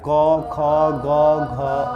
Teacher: क वर्ग में क्या आएगा क ख ग घ और ग इसका उच्चारण स्थान कहां होता है कंठ